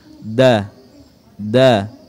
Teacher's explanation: ujung lidah disentuhkan di Pangkal gigi depan atas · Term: huruf da